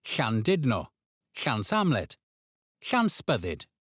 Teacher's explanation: Place your tongue against the roof of your mouth and blow outwards. You should feel the air escape around the sides of your tongue.